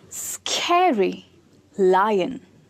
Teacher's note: For both of them, the stress is on the first syllable.